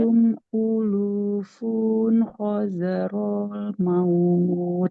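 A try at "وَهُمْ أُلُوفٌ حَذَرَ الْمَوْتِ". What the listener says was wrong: Jangan hadarul. Wahum ulufun hadaral maut.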